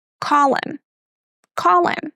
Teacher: The word him is very often reduced to m. So again we drop the h. For example, call him.